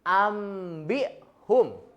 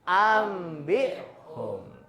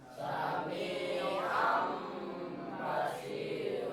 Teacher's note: iqlab ini mengubah daripada nun mati atau tanwin jadi bunyi mim ya. bertemu dengan huruf ba